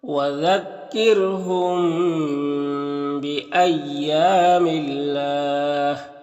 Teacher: اللہ کلام سے پہلے میم کے نیچے زیر تو اللہ کلام کو باریک پڑھیں گے، اور وقف کریں گے تو مد عارض وقفی ہوگا تو اس طرح سے پڑھیں گے.